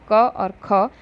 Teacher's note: क और ख यह कंठ ध्वनियां हैं